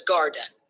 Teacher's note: gar carries the stress and den is softer